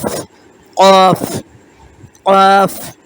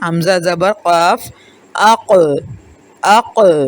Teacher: قاف زبان کی جڑ اور اس کے مقابل تالو کے نرم حصے سے نکلتا ہے،